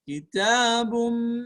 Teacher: Ketika tanwin bertemu dengan mim, namanya adalah idgham bi gunnah. Kitabum, ada dengung setara dua harokat